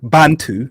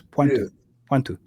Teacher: And the soft B is actually pronounced with a PW.